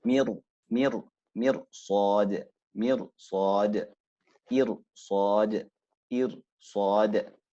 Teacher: So your ra has to become round, going into the letter of tafkhim.